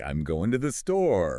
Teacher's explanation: does we usually use a falling intonation for statements okay but if you were unsure or wanted to check if someone agreed with you your voice might go up at the end